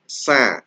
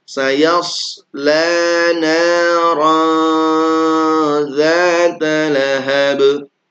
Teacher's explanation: Kalau sin itu cirinya sa sambil senyum. Tapi shad ini tidak senyum. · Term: huruf shad